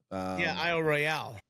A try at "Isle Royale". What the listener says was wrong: But it's Royal, not Royale. That's the key. It's spelled like it should be Royale.